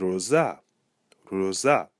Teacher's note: So we hear that the final syllable, za, has the emphasis. So we place the acute accent over the A.